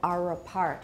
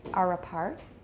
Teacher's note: But native speakers will usually link are apart.